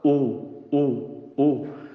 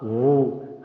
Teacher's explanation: it should come from the bottom of your throat. Waw is from your lips.